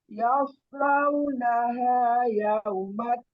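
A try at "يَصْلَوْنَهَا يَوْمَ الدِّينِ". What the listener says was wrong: Nah, shotnya sudah lebih baik. Tadi di awal masih terdengar sin ya. Ketika mengulang sudah ada perubahan. Yaus. belum konsisten Bu. shotnya kadang tepat kadang pas lupa mungkin berubah jadi sin.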